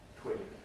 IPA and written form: twɪn (twin)